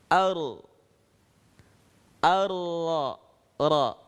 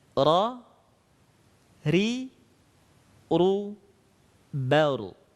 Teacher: saat kita melafalkan huruf ra, getaran itu tidak terlalu banyak. Tapi agak disamarkan sedikit dengan menyentuhkan punggung lisan ke langit-langit.